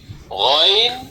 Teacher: 3 number মাখরাজ হলকের শেষ ভাগ হইতে